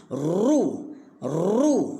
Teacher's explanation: ra baris di hadapan, ru, getarkan lidah kemudian muncung.